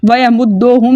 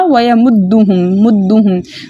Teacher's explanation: ठीक है, दाल मुशद्दद मजबूती और जमाव के साथ पढ़ा जाएगा, क्योंकि इसके ऊपर अंदर जो है मुशद्दद हरफ के अंदर 2 हरूफ छुपे होते हैं, तो हमने इसको मजबूती और जमाव के साथ पढ़ना है। और दूसरा, हमने ओ के साउंड के साथ नहीं पढ़ना, हमने यू के साउंड के साथ पढ़ना है। व या मुद्दोहुम भी पढ़ देते हैं कुछ लोग ना, तो हमने इस चीज़ का ख्याल रख के पढ़ना है कि हमने इसको व या मुद्दोहुम नहीं करना, व या मुद्दुहुम।